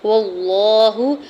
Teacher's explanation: واو کی زبر کو لام جلالہ کے ساتھ ملاتے ہوئے اللہ کے نام کو پر پڑھیں گے اور پر کھڑی زبر ہے، دو حرکت کھینچ کے بھی ادا کریں گے۔